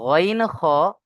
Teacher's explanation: ঈন খ মাখরাজ অর্থাৎ কন্ঠনালীর শেষ ভাগ থেকে উচ্চারণ হয়